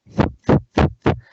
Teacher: You can hear the air coming out of my mouth, and you can also see my tongue between my upper and lower teeth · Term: TH sound